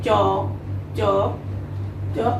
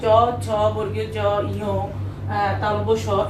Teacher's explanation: এগুলো যখন উচ্চারণ করি আমরা, জিহ্বার উপরের অংশটি তালুকে স্পর্শ করে বলে এটার উচ্চারণ স্থান তালু, এবং এইগুলোকে আমরা তালব্য বর্ণ বলতে পারি।